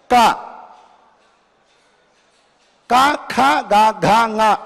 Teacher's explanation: దాని యొక్క ఉత్పత్తి స్థానం ఏమిటి అనంటే కంఠము. కంఠము నుండే పలకాలి. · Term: కవర్గ